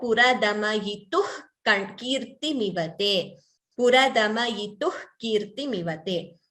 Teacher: Pratapavyamishram puradama-yituhu. So, visarga followed by ka, we get jihva muliya.